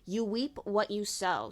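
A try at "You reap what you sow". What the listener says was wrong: You reap. You said weep.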